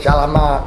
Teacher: the word for peace was shalama, with the last character vocalized